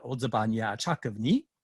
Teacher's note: a question by using ni with the high rising tone